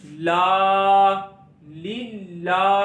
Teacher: खड़ी जबर को एक अलिफ जितना लंबा करेंगे, लाम खड़ी जबर ला लीला।